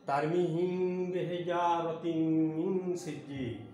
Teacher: সেহেতু এখানে আমাদেরকে তারমিহিম বেহিজারা বলা যাবে না, তারমিহিম বেহিজা চন্দ্রবিন্দু নিয়ে উচ্চারণ করতে হবে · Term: মিম সাকিনের ইকফাটা